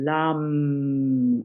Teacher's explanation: So you just take one big breath and you bring your awareness into the root of the body and you just sound the lam. And you sound it like they're two syllables, even though it's one apparent syllable